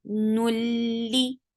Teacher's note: idgham without gunna. So you're not keeping sound in your nose.